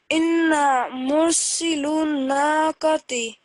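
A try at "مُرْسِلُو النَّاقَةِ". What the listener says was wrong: Just make it a little bit stronger. Mursilun naqati. Not lu, so remember these are all blank. The only thing we're considering is this dhamma, which is 1 second.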